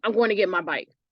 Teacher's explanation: you can hear how short the my sounds in that sentence so it is unstressed